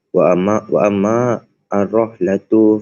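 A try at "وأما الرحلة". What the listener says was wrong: Baris bawah. Dia ada syaddah kan? Lepas tu ada baris kat bawah. Kalau syaddah baris bawah maksudnya bawah. Kalau syaddah atas baru baca atas macam ni.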